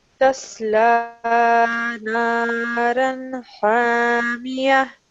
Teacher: you have paused here, so the ta marbuta, which is this one at the end, turns into a ha.